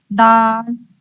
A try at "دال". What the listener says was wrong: بہت اچھے.